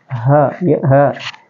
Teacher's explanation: ya teman-teman aksal halqi itu adalah berada di pangkal tenggorokan jadi ini H ini penyebutannya di pangkal tenggorokan dia di dalam tenggorokan · Jadi ini ha ini penyebutannya itu di pangkal tenggorokan. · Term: aksal halki